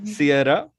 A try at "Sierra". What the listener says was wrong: It's not Syria. Sierra. It's a name.